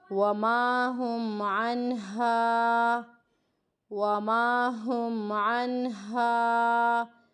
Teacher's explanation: یہ ہا ہے، بھاری سینے سے ادا ہونے والا لفظ ہے